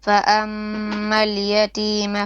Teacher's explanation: ميم شدة 2 beats at least. فَأَمَّا الْيَتِيمَ فَلَا تَقْهَرْ.